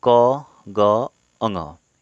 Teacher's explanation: उच्चारित होते समय मुख से कम हवा निकले अल्प प्राण कहलाते हैं, ठीक है। अल्प का मतलब कम और प्राण मतलब वायु।